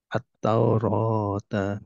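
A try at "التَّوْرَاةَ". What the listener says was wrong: Nah, untuk membaca tasydid apalagi huruf ta ya dan huruf yang lainnya agak jeda sedikit. Jadi tidak terlalu cepat atau tapi at-taurata at-taurata gitu.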